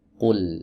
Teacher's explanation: dalam kasus ini huruf lam wajib dibaca tipis tidak boleh dibaca tebal Nah untuk menyempurnakan ketipisannya maka posisi bibir itu tidak boleh ada